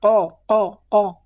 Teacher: Pangkal lidah menyentuh langit-langit yang lembut, langit-langit yang lunak dirasa oleh lidah kita.